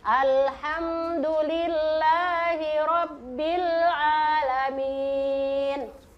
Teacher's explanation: Padahal itu adalah hukum izhar syafawi. Mimnya tidak boleh kasih dengung-dengung atau dikasih pantul-pantul